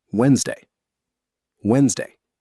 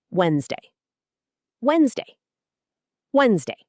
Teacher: 2 syllables only. Tip: the D in the middle is completely silent. Never say Wednesday.